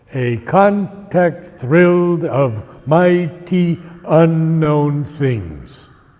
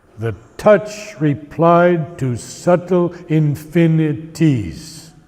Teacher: there are 5 beats to the line, and it's called iambic pentameter because each beat is short, long.